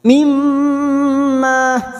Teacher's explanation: mim mim yang bertasdid gunah musaddadah kita dengungkan selama tiga harakat